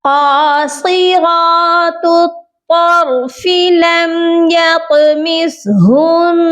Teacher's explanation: طا موٹا بھی پڑھا جائے گا اور اس پر قلقلہ بھی کریں گے، کیونکہ طا جو ہے حروف قلقلہ میں شامل ہے۔